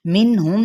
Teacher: میم پہ اظہار شفوی ہے، کیونکہ یہ حروف شفویہ میں سے ہے